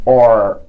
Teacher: The post alveolar and the front of the tongue touch each other and they make or. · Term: صوت الار